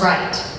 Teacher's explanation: that final T you don't just get to drop